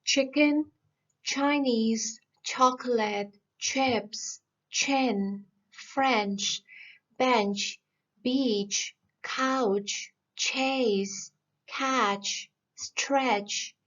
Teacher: ch is a voiceless sound. Obviously it is coming from the middle part of the tongue that touches the back of the alveolar ridge. It's quite theoretical, but as a matter of fact, it's just a ch sound, which I'm sure it's very easy for everyone to pronounce.